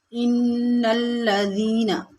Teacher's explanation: یہاں پر نون مشدد ہے، اس کو سختی اور جماؤ کے ساتھ پڑھیں گے۔